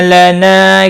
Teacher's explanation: अलिफ मद्दा है, एक अलिफ के बराबर खींच कर पढ़ेंगे।